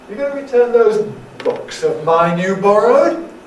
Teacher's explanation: Which is this? It's a yes-no question, so it's going to tend to have a rise.